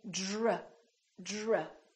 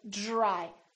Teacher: So this DR sort of becomes like the letter J, j, or the phonetic symbol looks like this.